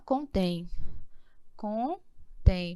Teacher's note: qual é a sílaba mais forte contém a última